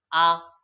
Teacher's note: জিভটা সামনেও যায়নি পেছনেও যায়নি, মাঝখানে স্থিরভাবে থেকে গেছে, তখন হয়েছে কেন্দ্রীয় স্বর, আ।